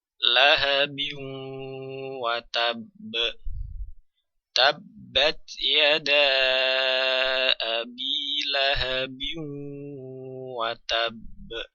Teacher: di sana dituliskan ada tasdid di sini Di sini karena ee tanwin melebur atau idgam ke huruf wawu